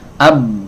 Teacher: Suara pengen mengalir tapi makhrajnya tertutup, rapat. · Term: syiddah